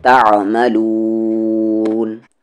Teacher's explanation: عین بیچ والے حلق سے